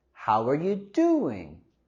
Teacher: Y queremos subir la entonación en la primera sílaba de doing.